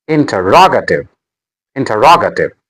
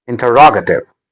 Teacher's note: The stress is on ra.